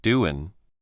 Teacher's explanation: The G at the end of doing often becomes a simple N sound. So it sounds like doing.